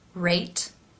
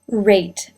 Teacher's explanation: Notice in the R sound for rate that the lips are more rounded.